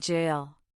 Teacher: For jail, the sound is made with the blade of your tongue against the hard pallet.